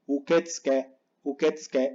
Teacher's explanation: Sí que decimos la U, pero muy bajita. Y esta última tenemos doble K, así que hay que hacer pausa.